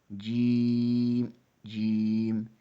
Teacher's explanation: وسط زبان بالمقابل اوپر کے تالو سے لگے تو جیم، شین، یا ادا ہوتے ہیں۔ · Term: مخارج نمبر 5